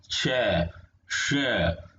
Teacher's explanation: हमारी जीभ जो है ये तालु पर लग रही है